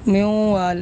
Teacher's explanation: تو اب نون کو ہم نے واو کے ساتھ مدغم کر دینا ہے